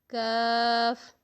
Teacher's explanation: تھوڑا سا منہ کی طرف آئیں گے تو زبان اور اوپر کا تالو، یعنی زبان کی جڑ اور اوپر کا تالو جب آپس میں ملیں گے تو پڑھا جائے گا کاف